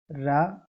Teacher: जो जीभ है हमारी वह पीछे की ओर मुड़ती है उच्चारण करते हुए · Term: लुंठित व्यंजन